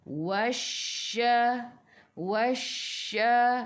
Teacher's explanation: Tekan ke dalam shin. Shin ada sabdu. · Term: Alif lam syamsiyah